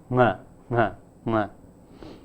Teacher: a voiceless velar nasal